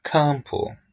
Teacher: Letter M has no sound here. It's a nasal sound. Campo. So letter M is not pronounced.